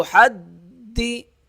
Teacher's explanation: تا پیش تو، حا دال زبر حد، دال زیر دی۔ دال سختی سے ادا ہوگا تشدید کی وجہ سے